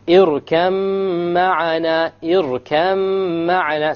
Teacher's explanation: What will the shadda do with the mim? The shadda will put a ghunna on it, so you'll have إِرْكَمْ مَعَنَا, إِرْكَمْ مَعَنَا.